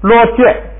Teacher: 嘛呀，就相当于咱们汉语这个词，就本来你要是在藏传里头啊，喇嘛那个拉玛那是那个上师，哎，是很少有的。结果呢，我们给误解了。我们汉地的这和尚也是，你看一个山上可能才有几个和尚，哎，我们也误解了，称所有的出家人都叫和尚。这两个词挺相似，这个遭遇挺相似。这是喇嘛。下边一个啊，罗戒没变，后边这个戒注意啊。第一，卡雅大本来是读茶，但是呢，字母表第三竖行那个卡查塔巴查这5个字母呢， 如果放在第2个音节，就变成不送气，而且变成一声，变成平声